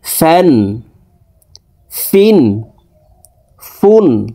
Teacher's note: ফা দুই জের ফিন ফ্যা দুই পেশ ফুন ফ্যান ফিন ফুন উপরের দাঁত নিচের ঠোটের পেটের সঙ্গে লাগিয়ে ফা হরফের উচ্চারণ করতে হবে